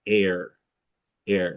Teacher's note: A starts in gray day but moves towards R.